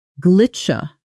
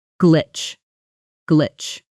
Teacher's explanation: Glitch ends in a hard ch sound sitting right after that short I, with almost no space between them. Gli, cheech, tight and quick.